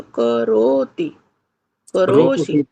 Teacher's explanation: रो को खींचिए, ती सी को नहीं।